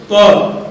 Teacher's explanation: जब आप प बोलते हैं तो अंदर से आती हुई वायु ओष्ठ स्थान पर, ओठों पर आकर रुक जाती है और आप वापस ओठ खोलते हैं तो ही प का उच्चारण होता है।